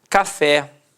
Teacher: repare que a sílaba tônica é a última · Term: oxítona